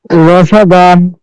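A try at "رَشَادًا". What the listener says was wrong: শেষে কি দান নাকি দা আমরা ক্লিয়ার বুঝতে পারতেছি না। জি সেটা একটু সুন্দর হবে। রশাদান,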